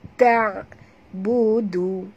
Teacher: Ta jangan tebal huruf ta. Ta bersifat istifal, huruf ringan.